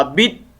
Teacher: لام نہیں پڑھیں گے، یہ ادغام ہو جائے گا اس کا